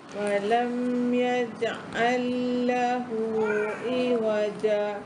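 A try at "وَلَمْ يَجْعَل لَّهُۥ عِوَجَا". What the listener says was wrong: Tapi dia panjang sini. Ai waja.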